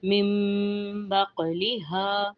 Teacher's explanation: قاف موٹا ہے تو ہم نے یہاں پہ قلقلہ بھی کرنا ہے۔